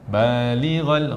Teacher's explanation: ghal ni kena bunyi vokal o, ghain. Vokal o, tak boleh balighal.